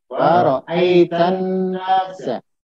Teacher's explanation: Jadi nunnya itu tasdid, ya. Nunnya tasdid maka digunakan minimal 2 harokat.